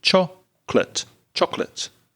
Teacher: only two syllables in chocolate and the first syllable is stronger